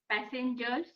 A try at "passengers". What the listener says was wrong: Again, madam, keep it tight. Like, when you're saying it, instead of stretching it, you say passengers.